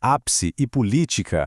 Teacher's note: a sílaba forte é a antipenúltima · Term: proparoxítonas